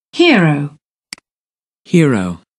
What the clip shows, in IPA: ˈhɪə.rəʊ